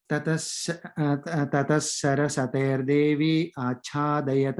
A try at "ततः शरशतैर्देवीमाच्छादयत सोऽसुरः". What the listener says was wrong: Which is the first line, Devim im sound, okay? Sharashatair Devim.